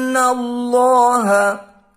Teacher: Allah tafkhim atau dibaca tebal karena didahului harakat fathah